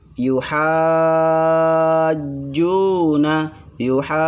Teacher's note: Kenapa yuha hanya panjang? Karena ada mad lazim kalimil musaqqal, maka dia dipanjangkan 6 harokat.